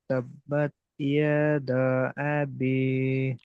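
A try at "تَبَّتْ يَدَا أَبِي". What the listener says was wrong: হয়নি, দা টান দিতে হবে, তিন আলিফ।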